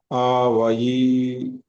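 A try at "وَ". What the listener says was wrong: లేదు, ఫథా అలీఫ్, ఫథాని పొడిగించాలి. ఫథా అలీఫ్, ఫథా శబ్దం ఎలా వస్తుంది? తెలుగులో మనం ఆలు నేర్చుకున్నాం కదా. వావ్ ఫథా అలీఫ్ సగీరా, దీన్నే పొడిగించండి. వావ్ ఫథా వా. పొడిగించాలంటే ఏం చేయాలి? దీర్ఘం తీయాలి. ఆ వా. ఇక్కడ 2 హరకాతులు, ఇక్కడ 2 హరకాతులు.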